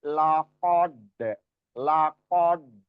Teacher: jangan dalnya jangan keikutan tebel kayak qofnya, tapi tebel dulu di qof baru ke dalnya tipis. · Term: dari tebal ke tipis